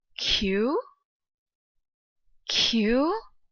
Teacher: I whisper in a short rising tone because I'm so shocked. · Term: second tone